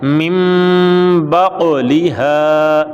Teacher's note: اب چونکہ با آ گیا تو پھر نون کو میم سے بدل دیں گے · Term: اقلاب